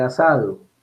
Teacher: Esta S fricativa alveolar sonora se da cuando la S está entre vocales.